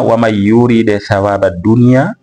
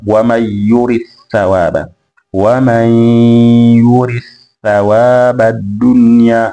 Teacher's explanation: wamesoma kwa idhhar herufi ya ad-dal kwenda katika herufi ya atha katika sehemu ya yurid thawaba